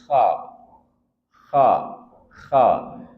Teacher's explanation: Mim sudah kita bahas, nun sudah kita bahas k dari tenggorokan bagian atas dan dia punya sifat istila'la. Berarti arah dorongan suara itu ke langit-langit mulut. K dan dia ada suara ngoroknya k beda dengan ha.